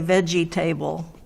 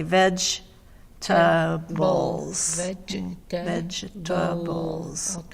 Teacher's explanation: vegetables yes three syllables but even though there's table there we don't say table